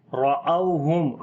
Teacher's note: را کو موٹا پڑھیں گے، اس کے اوپر زبر ہے او، یہاں پر واو لین ہے، نرم پڑھیں گے، لمبا نہیں کریں گے